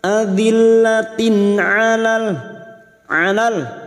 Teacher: Tak marbuta yang berharokat kasroh tanwin bertemu ain, idhar halki. Kasroh tanwin atau kasroh tain dibaca jelas tanpa mendengung, maka bunyinya adzillatin alal.